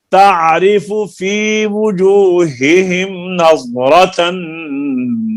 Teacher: نظرہ کے را کو لمبا نہیں کرنا